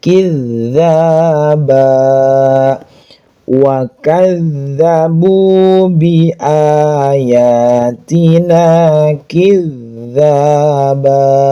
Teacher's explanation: huruf dzal di ujung lidah bukan waazzabu.